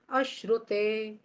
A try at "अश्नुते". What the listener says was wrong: अश्रुते नहीं है, अश्नुते। ना, रा नहीं, अश्नुते। अश्नुते।